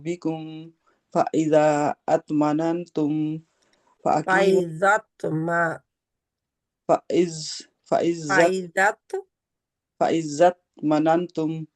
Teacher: छोटा कलकला होता है यानी कि आवाज जरा सा दोबारा सुनाई देती है